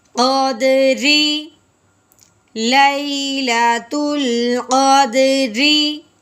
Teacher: ہاں جی، رو کے نیچے زیر ہے، رو کے نیچے زیر آ جائے اس رو کو باریک کر کے پڑھتے ہیں